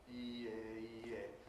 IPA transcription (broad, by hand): iː ɪ iː ɪ